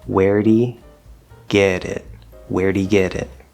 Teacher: in american english when a t connects over to a vowel like this it will become a flapped or tapped d